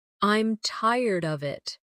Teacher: Instead of, I'm tired of it, they might say, I'm tired of it, with of sounding almost like uhv. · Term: weak forms